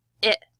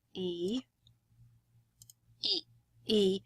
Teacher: E, which is a long vowel sound, and it's sort of a longer, thinner blob of sound waves